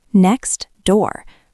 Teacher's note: I have to stop my air, tap my tongue for the T, release it, and then start again for the D.